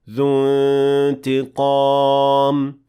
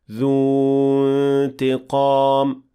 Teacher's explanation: in spite of the fact that dhu ends with a natural mad letter, we will not extend because of التقاء الساكنين. So it will be completely dropped, and we will say ذو انتقام, not ذو انتقام.